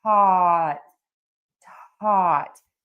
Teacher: think of it as being spelled t o t with that open ah